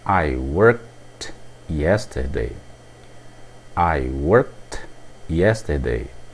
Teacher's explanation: O som é o som de T. Isso porque o verbo termina com o som de K.